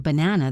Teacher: in the word banana, the first a and the last a are schwa sounds.